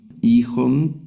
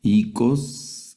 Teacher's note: el diptongo epsilon iota y también el diptongo omicron iota se pronuncia como una I.